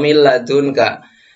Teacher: ada huruf nun sukun bertemu dengan lam ya lemnya itu nanti menggantikan huruf nun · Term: idgham bilaghunah